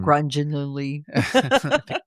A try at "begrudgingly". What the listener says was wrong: There's no grunge. No grunge.